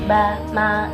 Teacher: huruf ba sama huruf mim itu kan ada di antara dua bibir ya